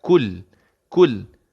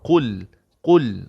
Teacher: qaf ni, huruf isti'la ni, pangkal lidah yang dekat alkum tu, dia terangkat kan tuan-puan? Okay, tapi kaf ni, tak perlu terangkat.